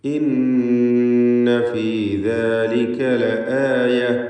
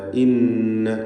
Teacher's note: ഇന്ന ഷദ്ദുള്ള നൂനിനെ മണിക്കണം, നൂൻ മുഷദ്ദദ.